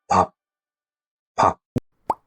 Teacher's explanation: it becomes an unreleased stop, which means your lips closed as if you're going to say P, but you stop the sound before releasing any air